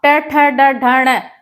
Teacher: ट ठ ड ढ ण हमारे दांत के अंदर के हिस्से से ये टकराता है जीभ हमारी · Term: मूर्धा